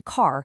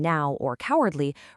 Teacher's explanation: But a diphthong, like the ow sound in now or cowardly, requires your mouth to glide smoothly from an open ah position right into a rounded oo position. It's two entirely different vowel qualities beautifully blended into a single beat of sound.